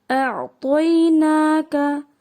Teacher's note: نا کا پہ جو کھڑی ہے زبر اس کو تھوڑا سا لمبا کر کے پڑھنا ہے، چھوٹا نہیں کرنا ہے، جیسے کہ موسٹلی ہو جاتی ہے غلطی، اعطینا کا جلدی سے پڑھ دیتے ہیں تو اس کو تھوڑا سا نون کو لمبا کرنا ہے۔